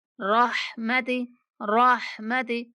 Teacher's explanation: रा को पुर करके पढ़ेंगे और हा को दरमियान हलक से बारीक सी आवाज में पढ़ेंगे।